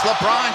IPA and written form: ləˈbrɒn (LeBron)